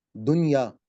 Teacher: दुन इसको हमने गुना नहीं किया और दुनिया पढ़ा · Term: इज़हार